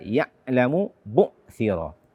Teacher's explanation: membaca ain dengan suara tertahan. Di ayat ke-9 ini terdapat dua ain sukun, ya'lamu bu'thira.